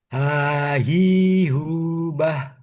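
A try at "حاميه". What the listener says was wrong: Bah, tambahin lagi anginnya.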